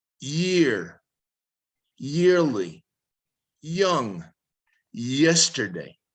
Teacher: sound now the y sound the white consonant sound consists of placing the tip of the tongue just behind your front teeth and then lifting the middle of the tongue towards the ceiling of the mouth